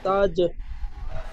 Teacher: তাজ হবে না, জিমটি কলকলা হবে।